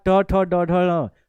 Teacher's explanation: ट ठ ड ढ ये मूर्धा हो गया